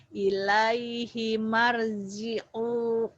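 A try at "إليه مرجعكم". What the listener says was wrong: Marji'ukum. Nggak ada yang panjang. Nggak ada yang panjang. marji'ukum. Panjang hanya. Panjang. Ilaihi marji'ukum. Tuh enggak gitu ya. Itu karena ini aja biar keluar gitu ya. Tapi enggak boleh begitu bacanya nih ya. Ilaihi marji'ukum jami'a gitu.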